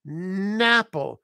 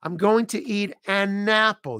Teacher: we take the N in an, and we put it on the word apple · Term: word connections